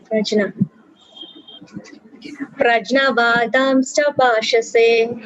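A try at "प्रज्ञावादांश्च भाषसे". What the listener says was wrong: It's not prajna, it is pragya. Pragya. Pragya vadamsha bhashase. Okay, it is pronounced as gya, not jna. I mean, some people do pronounce as jna, and that's okay. But in general, pragya. So pragya vadamsha bhashase.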